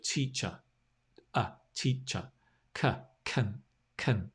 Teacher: the schwa sound in English is the most common sound. It's the sound at the end of teacher